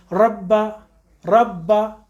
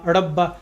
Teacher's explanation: را کے پر زبر ہے، ذرا سی زبان اوپر کر دیجیے. اپنی پہلی کنڈیشن پہ را پڑ جائے گی مفخم موٹی